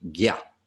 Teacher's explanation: The tilde over the N is a nya sound, so it's kind of the back third of your tongue against the back third of the roof of your mouth. And when it comes after a J, the J takes on more of a G or a hard G sound, G. So this would be gya.